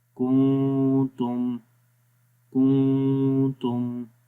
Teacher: میم کی آواز کو ہونٹوں کے خشک حصوں سے پڑھیں گے اور میم کی آواز ناک کے اندر بھی گونجے گی